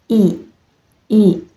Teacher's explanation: Vokal I dilafalkan dengan posisi lidah diangkat, tinggi ke depan mendekati langit-langit mulut tanpa menyentuhnya. Mulut dibuka sempit, dan bibir ditarik ke samping seperti tersenyum. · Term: vokal depan tertutup